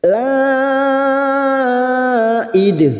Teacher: ada mat yang bertemu dengan hamzah dalam satu kalimat, mat wajib mutasil. Mat wajib mutasil 5 harakat kita panjangkan. La id. Dal yang mati di akhir kalimat namanya qalqalah kubra.